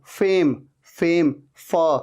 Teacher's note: अच्छा यहां पर देखिए, फेम, मैं जब कह रहा हूं फेम, फ, ऊपर के दांत नीचे वाले लिप पे आ रहे हैं, टच हो रहे हैं